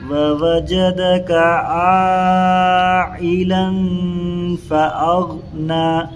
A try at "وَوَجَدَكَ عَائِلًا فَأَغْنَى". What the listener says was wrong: یہاں اخفا نہیں ہو رہا ہے، غنہ ہو رہا ہے. غنہ اور اخفا میں فرق ہے. عائلا لن ہونا، لن نہیں ہونا.